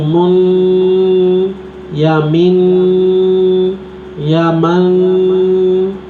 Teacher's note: آخر میں ہم جب ٹھہر جاتے ہیں تو اس کو غنہ کہتے ہیں، ناک میں آواز لے جانا غنہ کہتے ہیں اس کو